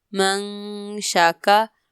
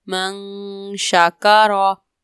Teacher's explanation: یہاں پر نون ساکن کے بعد شین حروف اخفا میں سے ہے تو یہاں پر غنہ کریں گے